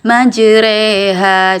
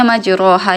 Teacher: Jadi huruf huruf fathah yang dikasrohkan, tapi kasrohnya bukan di i tapi di e. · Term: imalah